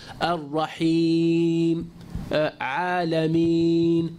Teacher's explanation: He said this is incorrect because the ya madiyah, the prolongation ya, does not come from the middle of the tongue, but rather comes from the openness of the throat and the mouth